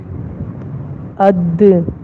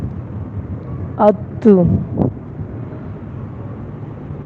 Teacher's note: یعنی حروف جب آپ ادا کریں گے تو آواز بالکل بند ہو جائے گی اور سختی کے ساتھ آواز نکلے گی، جیسے اد، اس طرح ات۔ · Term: شدیدہ